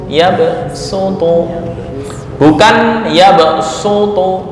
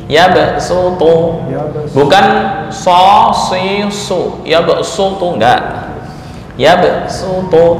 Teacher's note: ini poinnya adalah ya SH yang dibaca dengan Sin